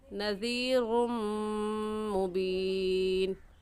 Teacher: میم دیکھنے میں ایک ہے اور پڑھنے میں 2 مرتبہ پڑھا جائے گا، ایک مرتبہ را کے ساتھ ملا کر اور دوسری مرتبہ خود، ایسے پڑھیں گے نذیر مبین۔ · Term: غنہ ادغام کے ساتھ